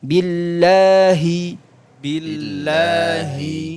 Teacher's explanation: ha itu dia makhrajnya sama seperti Hamzah paling jauh dia tonggorkan bagian bawah Billahi Hi tanpa berlebihan ada yang saking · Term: huruf Ha